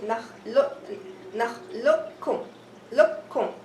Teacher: The qaf sound is gone and it merged into the kaf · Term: idghaam kamil